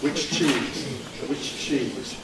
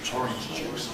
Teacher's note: in the case of affricates, we don't get a long affricate, we get two affricates. So in which plus cheese, we have to say which cheese.